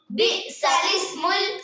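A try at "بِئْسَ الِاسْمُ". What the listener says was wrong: हमने पढ़ा बि'सल इस्मुल, बि'सा अलग है, लिस्मुल अलग है। बि'सल नहीं बोलना, असल में लफ्ज़ों को थोड़ा सा ध्यान से रखना है। बि'सा लिस्मुल, ठीक है।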